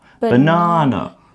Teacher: then we've got our longer sound in the middle na